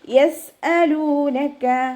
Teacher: സീൻ കൊൽക്കല letter ഇല്ലാത്തത് കൊണ്ട് half സുക്കൂന് കൊടുക്കാനായിട്ട് ശ്രദ്ധിക്കുക